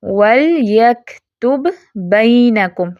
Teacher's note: پہلا با ساکن ہے، دوسرا با متحرک ہے، اور پڑھتے ہم اس کو کیسے ہیں، ان کو مرج کر دیتے ہیں، ٹھیک ہے، کمپلیٹ مرجنگ ہو جاتی ہے۔